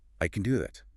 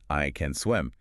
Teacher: When native speakers say this, they don't stress the word can. They make it very small, very weak. It's almost like a ghost word.